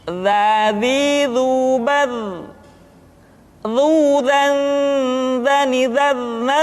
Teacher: diucapkan dengan menyentuhkan ujung lidah dengan dinding dua gigi seri bagian atas seperti kita mengucapkan huruf tha. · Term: huruf dha